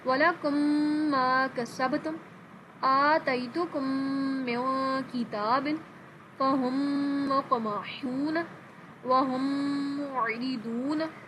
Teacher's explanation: میم کے بعد دوسرا میم آ رہا ہے، یہاں پر ہم اس کو غنہ کر کے پڑھیں گے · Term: ادغام شفوی